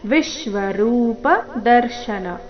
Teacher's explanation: ವಿ ಮೇಲೆ ಆಘಾತ ಬರಬೇಕು